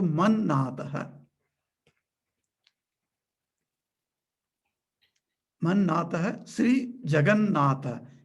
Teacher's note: Mat becomes Man because Na is following